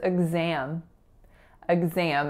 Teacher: in exam there are only two syllables and that first syllable is a schwa the second syllable is a nasalized tense ass sound so it